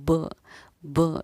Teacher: یہ دونوں ہونٹوں کا مل کر جدا ہونا، یہ مخرج کا ٹکر کھا کر الگ ہونا کہلاتا ہے، اس کو ہم قلقلہ کرنا کہتے ہیں۔